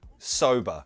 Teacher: It's got that nice schwa sound at the end. But remember, in American English is rhotic, so it wouldn't be sober, it would be sober.